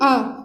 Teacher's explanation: आ जो है केवल एक ऐसा वर्ड है जो जीभ के मध्य भाग से उच्चारित होता है। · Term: मध्य स्वर